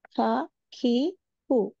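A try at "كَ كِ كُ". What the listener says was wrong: మీరు వత్తు పలుకుతున్నారు. కా కా ఖా కాదు ఇది, కా ఇది. కాకి. కాకి అంటున్నప్పుడు మనం కాని ఒత్తు పలకట్లేదు కదా. కా చాలా సింపుల్గా.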